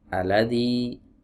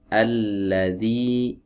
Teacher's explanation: ini harus benar-benar ditunaikan tasydidnya jangan sampai dibuang ya tasdidnya